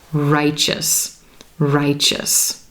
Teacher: preceding our EO suffix but it sounds like chch CH and the ending is going to be that quick us single syllable pronunciation